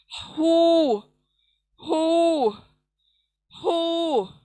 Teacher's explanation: हु, सीने से निकलेगा, सीने की तरफ हलक से निकलेगा।